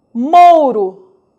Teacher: Note que a letra U representa uma semivogal pois está apoiada em uma vogal na mesma sílaba